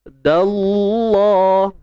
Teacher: Cuma dal tu kita tak payah tebalkan, yang tebal pada lam kalimah Allah je. Dallah, baru tebal pada lam kalimah Allah tu.